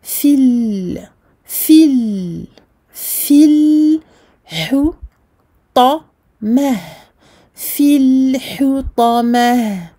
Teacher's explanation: Kalla la yumbadhanna fil hutamah. Fil, ici la prolongation de 2 temps disparaît parce que rencontre entre 2 soukouns. La rencontre de 2 soukouns fait que celle-ci n'est plus prononcée en fait, n'est plus prolongée. · La seule lettre emphatique ici, dans ces 2 derniers mots, c'est le ta. Attention à ne pas emphatiser le ha qui le précède. Et on termine évidemment avec un soukoun et surtout avec un ha à la place du ta.